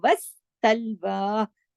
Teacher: सलवा के सीन के ऊपर तशदीद है, वस्सलवा, 2 दफा सीन की आवाज आनी चाहिए, सीटी वाला सीन है ये